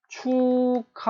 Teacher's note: 기역과 히읗이 둘이 붙으니까 기역과 히읗이 만나게 되면 이 기역, 예사소리인 기역은 뭐로 변한다? 거센 소리인 키읔으로 변한다